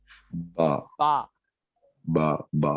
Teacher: तो बा बोलना है उसको तो क्या बोलना पड़ता तो उसको बा बोलने की वजह से दोनों होठों को मिला के अलग करना पड़ता